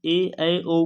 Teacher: जैसे आप ई ए ऐ ओ को बोल के देखोगे तो आपको ऐसा लगेगा जैसे हम जीभ के अगले हिस्से से बोल रहे हैं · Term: अग्रस्वर